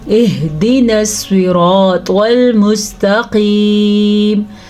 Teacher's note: را کو پر پڑھا کیونکہ را کے اوپر زبر ہے اور اس کو کھینچ کے بھی پڑھیں گے الف مدہ کی وجہ سے. الف مدہ کو ہم کھینچ کے پڑھیں گے.